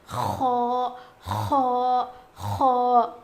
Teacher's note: موٹا پڑھا جائے گا. اس کا مخرج ہے حلق کے اوپر والے حصے سے خو ادا ہوتا ہے